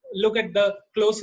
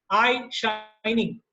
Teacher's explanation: Look at the close repetition of that O sound, the round vowel. I shining, the diphthong I is repeated in these two words.